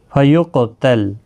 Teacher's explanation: قاف مستعلیہ ہے، پر بھی پڑھنا ہے اور ساکن بھی ہے، اس پر قلقلہ بھی ہوگا، لام ساکن کو ہلانا نہیں۔